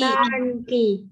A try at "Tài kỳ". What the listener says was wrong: Tài kỳ. Không phải là tan kỳ mà nó hơi lên giọng xíu. Tài. Tài.